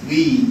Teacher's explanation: ডাব্লুর উচ্চারণ একটা আসবে, সেই জন্য দ্বি, দি নয়, দ্বি